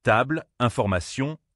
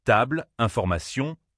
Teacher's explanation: En anglais, table, information, accent fort sur certaines syllabes. En français, table, information, accent plus léger en fin de mot.